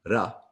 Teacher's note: the R sound is kind of a hard R. It almost sounds like a D sometimes, where you run the tip of your tongue off the roof of your mouth